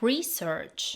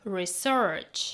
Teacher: As a noun, it is pronounced like: REE-search. Example: I did some research on animals. As a verb, it is pronounced like: ri-SERCH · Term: stress